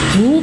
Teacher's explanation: hu pendek ya bukan mad silah qosiroh tidak ada hukum panjang di sini tapi pendek